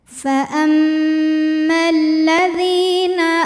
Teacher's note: lamnya tidak dibaca faammalladzi dzi ada hukum Mat thaobi'i zahiri sebab ada ya sukun yang didahului baris kasrah cara membacanya dipanjangkan dalalnya dua harakat